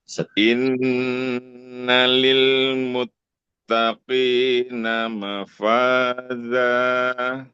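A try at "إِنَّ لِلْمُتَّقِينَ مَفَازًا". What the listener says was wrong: sempurnakan sedikit lagi. Jelaskan zat-nya.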